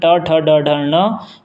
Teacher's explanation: इन सभी वर्णों का उच्चारण स्थान मूर्धा है